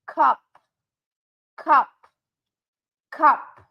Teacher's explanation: I hear no vibration in my throat when I say the word cup.